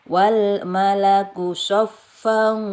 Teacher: dibaca 5-6 harokat ya harus dibaca panjang ini Wal malaku sofa ada tanwin ketemu shod ini ikhfa juga jadi tidak dibaca jelas tapi samar-samar ya sepanjang 2 ketukannya dua harokat